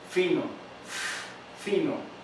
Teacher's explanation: Ejemplo, si usted va a pronunciar la palabra fino, tienes ese sonido inicial de la f. Entonces, al salir el aire, no está siendo totalmente obstruido el aire, sino que tiene un roce y produce una fricción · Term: fricativas